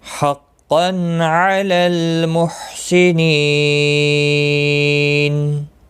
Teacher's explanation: سنینی یا مدہ ہے، ایک الف کے برابر کھینچ کر پڑھیں گے، اور وقف کی صورت میں نون ساکن پڑھا جائے گا، وقف بالاسکان ہوگا، مد العارض وقفی ہوگا، 3 سے 5 الف کے برابر کھینچ کر وقف کریں گے